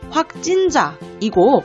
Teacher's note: 장애음과 장애음 연달아 만나면 그 발음이 뒤에 소리 지읒, 예사 소리를 쌍지읒, 된 소리로 만드는 거예요